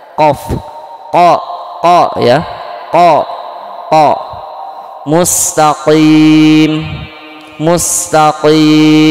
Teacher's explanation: Jadi qaf itu dari aqsal lisan, aqsal lisan wa ma fauqahu, atau aqsal lisani ma'a ma fauqahu minal hanakil a'la, pangkal lidah ya, dekat tenggorokan. Pangkal lidah dekat tenggorokan ada huruf qaf